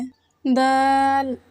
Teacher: जुबान की नोक को सामने वाले ऊपर के दो दांतों की जड़ से लगाकर बारीक आवाज में पढ़ें